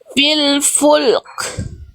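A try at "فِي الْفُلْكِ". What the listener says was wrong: Tinggal di lamnya jangan dipantulkan. Jadi lamnya cuma dialirkan sedikit, terus dikasih huruf kafnya kan jadi sukun nih. Kalau berhenti di sini, dikasih percikan nafas kafnya. Fil fulk.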